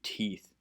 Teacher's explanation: it only has one tone and your mouth position doesn't move